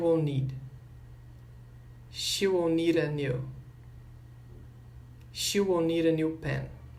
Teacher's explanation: o D do need vai ficar com som de R. Então, vai ficar nera.